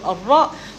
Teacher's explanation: we using the tip of the tongue, you can say head of the tongue and touch to pre-upper palate